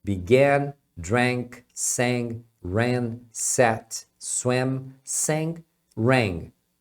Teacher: Então esses verbos que tem a letra A no passado. Se eles terminam com consoante, a pronúncia vai ser de é. Esse é bem aberto.